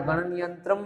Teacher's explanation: म जो है वो आधा है तो गणन यंत्रम, तो अ पीछे बोला नहीं जाता